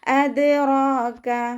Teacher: ദാല് കൽക്കലയുടെ letter ആയതുകൊണ്ട് full സുക്കൂന് കൊടുക്കാൻ ശ്രദ്ധിക്കുക. റാഇൻ്റെ കൂടെ അലിഫ് സഗീറ വന്നു 2 കൗണ്ട് നീട്ടിക്കൊടുക്കുക.